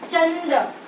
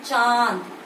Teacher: चंद्र आपको न की साउंड आएगी, लेकिन चांद केवल नाक में ही हल्की सी साउंड होकर रह गई, तो वो हो गया अनुनासिक।